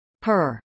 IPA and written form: pɝ (purr)